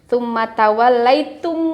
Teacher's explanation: mim ketemu dengan mim harus ditahan dulu ya